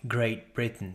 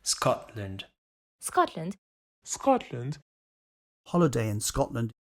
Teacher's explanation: In contexts like Great Britain, so just before another consonant, you can't hear the t being released. Same thing in Scotland. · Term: glottal stop